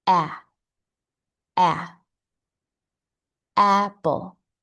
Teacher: There is a little bit of vibration a but we're more focused on our sound coming from the back of the mouth. And we open our mouth to the sides a little bit more than with a a. It helps to make a little smile to create this sound.